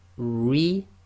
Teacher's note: if the ra carries a kasra, it's going to be light, tarqeeq